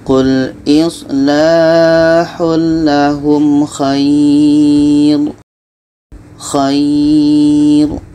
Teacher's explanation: Kita panjangkan 2 harkat baru kita matikan.